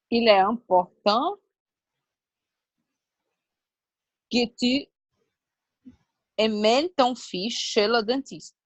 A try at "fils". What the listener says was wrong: C'est drôle, mais fils, on parle le S. Tu peux dire un fils de fils. Mais c'est comme um lápis. Um lápis, dois lápis. On ne parle pas lápises. C'est pas si.